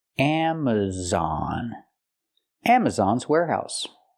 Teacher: we have a stress on the first and third syllable